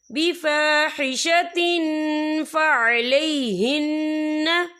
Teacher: تنوین کی آواز کو ناک میں چھپائیں گے